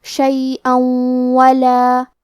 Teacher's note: واو حروف الادغام بغنہ میں سے ہے تو ہم یہ حکم کو غنہ اور تشدید کے ساتھ ادا کریں گے